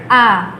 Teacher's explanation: Adapun cara membacanya ini teman-teman dia ini berada di Pangkal tenggorokannya Kalau teman-teman lafalkan boleh a ya pasti akan terasa di Pangkal tenggorokannya